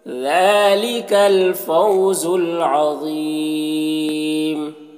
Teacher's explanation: فاؤ میں واولین سے نرم آواز کے ساتھ جلد پڑھیں گے. عظیم ذا کو پر پڑھیں گے اور یہاں پر وقف کریں گے تو مد عارض وقفی ہوگا